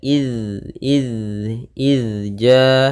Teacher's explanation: huruf dalal sukun yang di mana dalal tidak boleh memantul